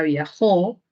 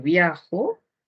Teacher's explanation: el acento cumple función distintiva en la palabra viajó porque podría ser viajo